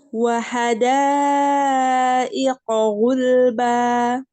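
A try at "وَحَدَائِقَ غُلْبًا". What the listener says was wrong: Lamnya gulba dilebarkan tapi lidah bagian depan. Bukan gul, jangan digigit lidahnya ya, jangan kena gigi. Gulba di gusi saja. Gulba.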